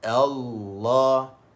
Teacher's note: Lam yang kedua yang ada pada lafaz Allah itu sahaja ditebalkan lah. Manakala hamzah tu dinipiskan. · Hamzah wasal itu kita baca dengan nipis